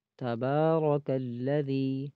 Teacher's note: با کے اوپر کھڑی زبر ہے، کھڑی حرکت ہے، اس کو ایک الف کی مقدار کھینچا جاتا ہے